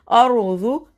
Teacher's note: ज़ौद का मखरज अपनी ज़बान को अपनी दाढ़ों के साथ लगाते हुए अर्ज़ु, जू भी ना हो और जो भी ना हो, ठीक है।